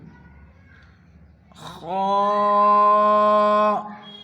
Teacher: خا کو شروع حلق سے نکالیں گے، خا، ان کو موٹی آواز اور پور نکالیں گے۔